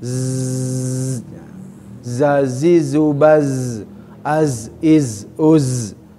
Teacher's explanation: ujung lidah bertemu dengan gigi seri tapi agak ke bawah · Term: Zain